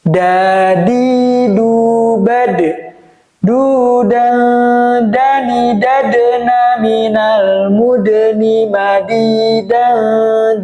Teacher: Huruf Da ini juga terkenal dengan huruf qalqalah ya. Jadi ada pantulan.